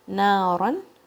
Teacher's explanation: اچھا جب فتحتین ہوتے ہیں تو پھر الف کے ساتھ لکھا جاتا ہے اس لیے یہاں پہ آپ کو نارن پڑھنا ہے الف پڑھنا نہیں ہے آپ نے اور کلیئر نون تنوین پڑھنا ہے یہاں پہ اظہار کے ساتھ